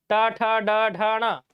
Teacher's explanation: मूर्धन्य वर्ण में ट, ठ, ड, ढ, ढ, ण आता है, ट, ठ, ड, ढ, ण, सब में जीभ ऊपर मुड़ रहा है